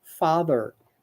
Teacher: the tip of the tongue between the teeth so you can pronounce it properly